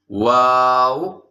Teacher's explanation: वाव पे होंठ गोल होंगे